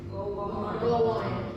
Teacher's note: the W sound is between go and on